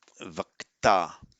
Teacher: The ch becomes a k before the following t.